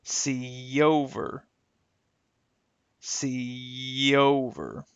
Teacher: the Y glide here will help connect the E to the O in the next word. This one, of course, even though we don't hear the Y will appear as a glide when we connect these two words.